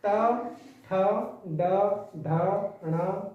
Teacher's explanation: जब हम इनको बोलेंगे तो जीभ का अगला हिस्सा वो पीछे को मुड़ेगा और तब इनकी आवाज बाहर आएगी। तो जहाँ जीभ मुड़ती हो जिस वर्ग में वो क्या हुआ, मूर्धन्य।